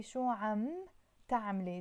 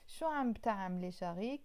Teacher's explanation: the b is there but half silent, half not silent